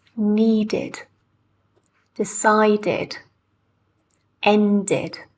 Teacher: it's very, very clear that this is an extra syllable with id